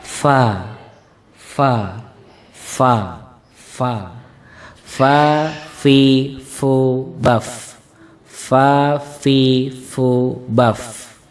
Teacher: huruf fa ini keluar dari bibir bawah bagian dalam yang bertemu dengan ujung gigi seri bagian atas.